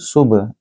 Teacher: इसको गूंजती आवाज़ कलकला के साथ अदा किया जाएगा